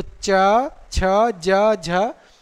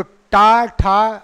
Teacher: अगर आप अपने जिह्वा को स्पर्श करो जिह्वा से तो देखो ध्यान रखो, चा तो दांत के थोड़ा ऊपर टकरा रही है, और अगर टा बोलो तो थोड़ा और अंदर चली जाती है ना, जहाँ जा रही है उसका उच्चारण स्थल वही होता है ना।